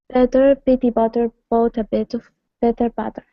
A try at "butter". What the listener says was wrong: your t's still sound much like t's and not enough like a d so not butter but butter can you say that with me